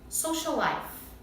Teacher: Os sons, os dois são L. Então a gente não precisa repetir.